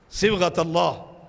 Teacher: یہاں یہ لام باریک نہیں، یہاں موٹا ہے تجوید کے لحاظ، اسے پر کیا جائے گا